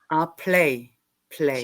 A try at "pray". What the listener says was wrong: Play. Pray. You pronounce it like pray. Yeah, it's only the L though. It's just the L. earlier when I heard it, it sounded like you were saying that your children pray,